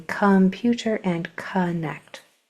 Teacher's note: So this would be come and kun, as in computer or connect. Come and kun are Latin roots, basically, where that O sounds like a schwa, as in computer and connect.